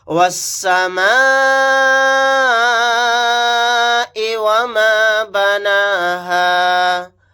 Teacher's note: واو کو سین کے ساتھ ملا دیں گے، الف اور لام نہیں پڑھا جائے گا۔ یہاں پر مد متصل کا قاعدہ ہوگا کیونکہ یہاں پر حروف مدہ کے بعد حمزہ اسی کلیمے میں ہے، تو اس مد کو ہم 4 الف کی مقدار کھینچ کر پڑھیں گے، وَالسَّمَاءِ وَمَا بَنَاهَا۔